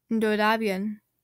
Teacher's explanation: The pronunciation of the prefix changes from nde to ndo by blending with the first sound w in wadabian